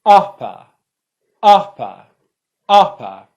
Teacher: there that for the r which was the first syllable ah my mouth came down lower and it was more stressed it was produced with more force and uh the schwa didn't come down as far and it was much less stressed